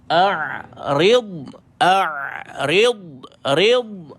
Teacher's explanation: Matikan dad, dan ada sifat istitalah, dia dipanjangkan bunyi dia.